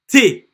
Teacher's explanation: you can see a little bit of air again coming out of your mouth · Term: the T sound